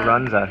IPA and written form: ˈrʌnzə (Runza)